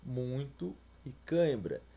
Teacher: o som do encontro tem o ar passando tanto pela boca quanto pelo nariz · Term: nasal